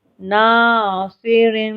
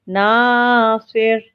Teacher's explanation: صاد بھی موٹے حروف میں سے اس کو ہم نے موٹا پڑھا